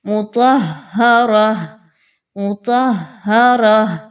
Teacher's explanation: یہاں پر ہا کا مخرج، طا کا مخرج، را کا مخرج، را کو موٹا کر کے پڑھیے اور آخر میں گول تا کو گول ہاں میں بدل دیجئے تو وقف ہو جائے گا.